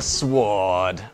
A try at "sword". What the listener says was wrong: It's a hard W in the word sword.